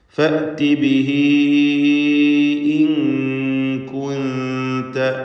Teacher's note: മദ് മുൻഫസിൽ ജായിസിൻ്റെ ഹുക്മ് തന്നെ. ഹ ദമീറിനെ 4-5 ഹറക്കത്ത് നൽകി അതിൻ്റെ ഉച്ചരിക്കുന്ന യാഇനെ ദീർഘിപ്പിക്കണം. ശേഷം ഹംസ അടുത്ത പദത്തിൽ വന്നതാണ് കാരണം. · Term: മദ്ദുസ്സിലത്തിൽ കുബ്രയാണ്